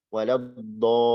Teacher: Contoh ad-dhalin. Dhad ini mad menghadapi lam tasydid dalam satu kata. Maka dhadnya kita panjangkan. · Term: mustaqol